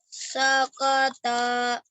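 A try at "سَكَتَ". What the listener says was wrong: Tanya jangan dipanjangin. Sakata, udah gitu aja.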